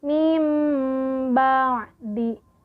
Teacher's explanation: Contohnya, kalau misalkan nun mati nih, mim ba'di, nun mati bertemu ba, nun matinya dihilangkan, diganti dengan mim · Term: iqlab